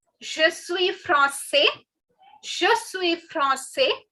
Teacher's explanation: If a French boy is saying this, he won't be pronouncing the last S.